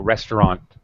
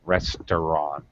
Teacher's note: my tongue ends at the top of my mouth in the t position but i don't drop my tongue so it just cuts the sound of the end · It's a dark T. You don't release it.